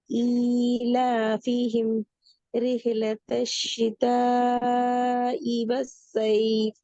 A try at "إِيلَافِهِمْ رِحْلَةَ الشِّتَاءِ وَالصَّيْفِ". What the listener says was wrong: அந்த ஈல ஃபிஹிம் ரிஹ்லத்துன்னு அந்த இடத்துல நிக்க கூடாது. நிக்கிறேன்னு சொன்னா சேர்ந்து அப்படியே போகும். கண்டினியூஸா அப்படியே ஃப்ளோல ஓதி கொண்டு போகணும்.